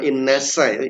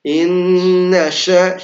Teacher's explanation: Nah, ditafasyikan, tafasyi atau disebarkan udaranya.